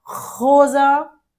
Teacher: Tem que arranhar a garganta. Quando o S tá no antecede uma vogal, você vai falar como se fosse Z, sempre.